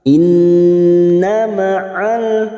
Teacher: nun yang bertasdid kita dengungkan dan ditahan selama 3 harokat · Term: gunna mustaddadah